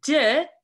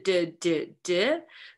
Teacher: the d, right? Which is a voiced alveolar